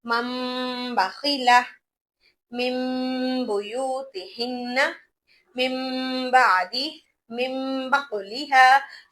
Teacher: सीन दो जेर सिन की आवाज नहीं आएगी, बल्कि सीन मीम दो जेर सिम, मीम की आवाज आएगी, नून साकिन की आवाज नहीं आएगी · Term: कल्ब